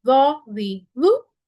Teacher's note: पीछे से जुबान की जड़ को ऊपर उठाएंगे तो मोटा हो जाएगा।